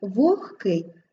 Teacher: вогкий г уподібнюється до глухого х